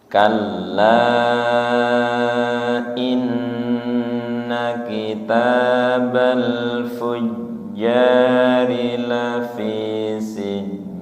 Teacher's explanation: Kal itu hanya ditasydid tanpa ditahan. Kalla tidak dibaca kalla.